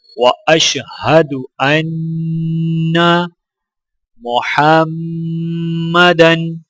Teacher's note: میم مشدد ہے، میم پر غنہ کیا جائے گا